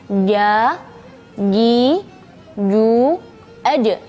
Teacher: jangan sampai huruf jim ada keluar angin ya